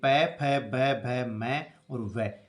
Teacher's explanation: जब कोई वर्ण होठों से बोले जाते हैं तो उनको ओष्ठ्य कहते हैं, जैसे प, फ, ब, भ, म और व, ये होठों से बोले जाते हैं, इनको ओष्ठ्य कहते हैं।